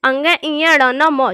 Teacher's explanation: ये नाक और मुख की सहायता से बोले जाते हैं, इसलिए इन वर्णों को अनुनासिक वर्ण कहा जाता है।